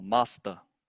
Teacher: master is a noun. And we are going to stress on the first syllable